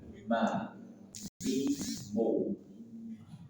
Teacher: mim, dua bibir dipertemukan dan dirapatkan disertai gunnah.